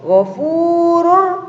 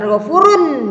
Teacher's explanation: Kalau tadi 4, yanmu, kalau sekarang 2, yaitu lam dan ro, maka dibaca idgham bilaguna, artinya memasukkan dengan tanpa mendengung. Contohnya, miladun, artinya lamnya di situ hampir dibaca, ya.